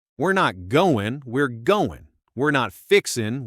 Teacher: dropping the G on words ending in ing